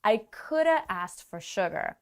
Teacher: when we speak with linking sounds and stress could, then have becomes very small and it becomes coulda.